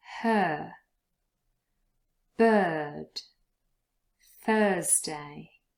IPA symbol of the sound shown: ɜ: